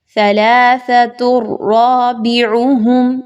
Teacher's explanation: دو پیش کی تنوین ہے تا کے اوپر، تو آپ نے اس کو ڈائریکٹ را کے ساتھ ملانا ہے